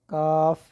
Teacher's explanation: زبان کی جڑ اور تالو کے سخت حصے سے کاف ادا ہوگا، کاف، کتاب والا کاف، ڈنڈے والا کاف جو ہوتا ہے، کاف، یہ وہاں سے ادا ہوگا۔